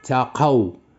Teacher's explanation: للذين اتقوا عند ربهم، للذي، هذا مقطع أحادي، ولكن المقطع الذي يليه ثنائي، للذي، إذا النبر غتعملوا على الذال، للذين اتقوا. كذلك هنايا مقطع ثنائي، النبر غيكون على القاف